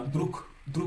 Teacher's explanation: le G s'est assourdi en K. Et le K est une consonne sourde qui est la paire des consonnes de la consonne sonore G.